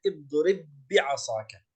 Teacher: يعني نقول هكذا اضرب بي تصبح باء واحدة، والمقصود بها الباء الواحدة يعني أن ندغم الباء الأولى في الباء الثانية فتصبح باء واحدة مشددة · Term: الإدغام الكامل